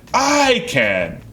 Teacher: I'm happily saying it, and I'm also stressing the I.